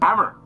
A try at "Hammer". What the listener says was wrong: It is heavily accented. And emphasis on the wrong syllable. Hammer. Hammer.